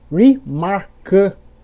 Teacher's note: Na coluna da direita estão as palavras com terminação able, onde o A não terá esse som de EI. Ele vai ter um som entre o E e o O, como se você estivesse com a boca meio dormente.